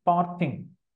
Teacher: Then we have this two-syllabic word, parting. Part is stressed, the first one. Ing, unstressed.